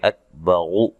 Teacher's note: کاف کو ہلانا نہیں ہے، حروف قلقلہ کے سوا کسی بھی حرف کو حالت جزم میں ہلائیں گے نہیں۔ را کو موٹا ادا کریں گے۔